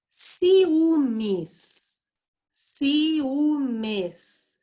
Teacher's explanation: Apesar do U ser a sílaba tônica, eu também escuto o som do I. Então, o I e o U sobem ao patamar de vogal e elas se separam. · Eu escuto o som tanto do I como do U. Apesar do U ser a sílaba tônica, eu também escuto o som do I. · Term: hiato